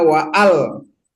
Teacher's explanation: Beda dengan ini, dengan wa alqaina, ya, itu kan walaqad fatanna Sulaimana wa al, tetap dibaca hamzanya itu karena hamzah koto al, nggak boleh baca wal qaina, nggak boleh.